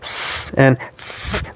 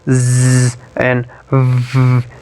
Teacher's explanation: So in production of this sound, you'll observe that by putting your thumb on your Adam's apple in your neck, you'll observe that while production of s and f, there is no vibration in vocal folds, whereas in production of z and v, you will see that there is vibration in your vocal cord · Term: voicing